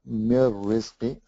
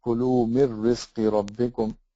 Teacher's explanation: So it's as if the noon didn't exist. We write it, but we don't pronounce it. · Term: idgham bighayr gunna